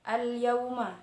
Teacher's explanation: Di sana ada al bertemu dengan huruf ya, sama seperti tadi hukumnya idhar qamariyah, yaitu harus dibaca jelas antara huruf al dan ya